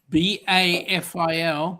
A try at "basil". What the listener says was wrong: No, S. BASIL.